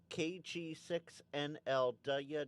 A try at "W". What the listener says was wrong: Okay, guys, out there in chat line, is that just me or is he not saying W? He's saying Dulya.